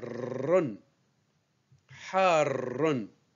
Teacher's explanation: le R est roulé plusieurs fois